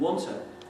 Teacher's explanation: sequences of long T's or two T's become reduced to one. So you end up with the pronunciation oughta.